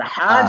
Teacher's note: যখন উচ্চারণ করবেন তখন আপনি একটা এক্সট্রা প্রেসার অনুভব করবেন আপনার এই মানে গলার মাঝখানে